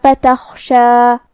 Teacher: حرف الخاء کو ہم حلق کے اوپر والے حصے سے ادا کریں گے اور اسے بھاری آواز میں بھی، کیونکہ خاء حروف التفخیم میں سے ہے۔